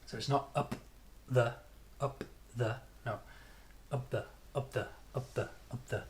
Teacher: there should be no extra space or pause between the P and the th.